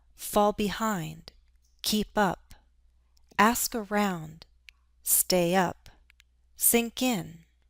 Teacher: I'm stressing the particle. These are all intransitive phrasal verbs.